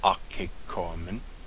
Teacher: the O omicron and the alpha are not a diphthong, so it's pronounced akekoamen.